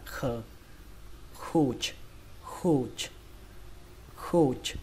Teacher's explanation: âm C này chúng ta sẽ đọc là âm khờ. Đẩy hơi nó ra, khờ. Khụt, khụt, khụt.